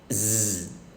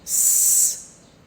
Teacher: Remember, it is known that the letter S is voiceless consonant. s However, when a single S sits between two vowels, the S s becomes voice sound.